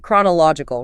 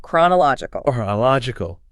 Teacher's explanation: 6 syllables. It is a marathon of breath control. Listen to the stress. The heavy beat falls on la.